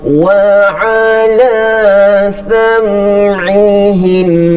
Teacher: tidak terjadi hukum yang mendengungkan mim tersebut, tetapi terjadi hukum izhar syafawi, dibaca dengan jelas.